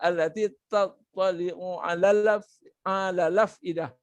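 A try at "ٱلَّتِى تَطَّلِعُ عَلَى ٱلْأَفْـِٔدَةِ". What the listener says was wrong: Cuma ada lagi yang tak tepat lagi. Masih lagi tak tepat lagi. Yang mana tak tepat? Iaitu huruf fa yang mati bertemu hamzah. Kita tak pindah. Jangan lupa kena pindah. Allati tattali'u 'alal afidah.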